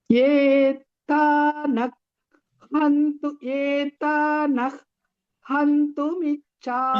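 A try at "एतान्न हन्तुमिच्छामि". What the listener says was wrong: Why you are using a ditvam? No ditvam.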